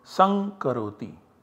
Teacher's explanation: nasal parasavarna of k, which is ng